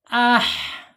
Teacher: A ini makhrajnya ada di bawah tenggorokan ya.